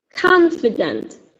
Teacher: As you can see stress is on the first syllable.